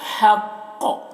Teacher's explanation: قاف کو موٹا کر کے پڑھنا ہے، اور یہاں پر وقف کریں گے تو قاف میں قلقلہ بھی ہوگا ، حق، قاف کی آواز ڈبل نکلے گی، ذلك اليوم الحق